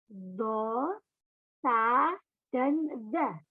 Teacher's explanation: Yang keenam, masih dari lidah, yakni dari ujung lidah dihimpit ke gigi atas sedikit renggang